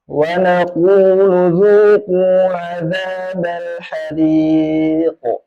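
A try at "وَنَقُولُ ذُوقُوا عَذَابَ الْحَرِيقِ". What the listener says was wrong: Udah, yang penting kerasa tuh kalau hariqo. Hariqo. Sebenarnya kuncinya untuk supaya tidak terjadi kayak tadi itu, kuncinya adalah nekannya jangan pas di mat.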